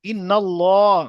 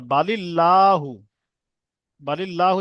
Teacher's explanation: করেন অর্থাৎ ল পড়তে মুখ গোল করে পড়তে হবে আর বালিল্লাহু বালিল্লাহু যখন পড়ছে তখন কিন্তু মুখ গোল হচ্ছে না এটা বারিক পড়া হবে · ইন্নাল্লাহ ল যখন বলছি তখন মুখ গোল হয়ে যাচ্ছে কিন্তু লা বলছি তখন মুখ গোল হচ্ছে না · পুর অর্থাৎ ল পড়তে হবে, অর্থাৎ মুখ গোল করে পড়তে হবে।